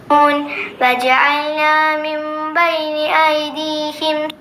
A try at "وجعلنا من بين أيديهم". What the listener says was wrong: വജഅൽന ജീമിന് ഫത്ഹാണുള്ളത്. വജഅൽന എന്ന് ഓതുമ്പോൾ ജീം സുക്കൂനോടെ ഉച്ചരിക്കുന്ന പോലെയാണ്. വജഅൽന എന്ന് പറയുമ്പോൾ ഈ ജഅൽന എന്ന വാക്കിനെ അത് മാദിയാണ്. ഇതിന് അംർ ഹാദിറിൻ്റെ പദമാക്കി ഉച്ചരിക്കുന്നത് പോലെ ആയിപ്പോകും.